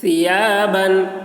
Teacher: ثا کی آواز باریک ہو رہی ہے